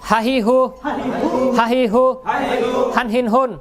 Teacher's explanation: একদম হলক কণ্ঠনালীর শুরু হইতে, হলকের শুরু হইতে উচ্চারণটা হবে। হলকের শুরু হইতে হামজা হা, এই দুইটা একই উচ্চারণ।